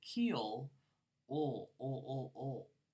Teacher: that L is bunched up in the back of your mouth